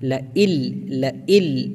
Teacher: ادغام تام ہے، یعنی بغیر غنہ کے پڑھیں گے اس کو